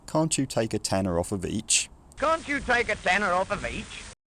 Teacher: A sort of high falling head and then a low rising nucleus. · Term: older intonation pattern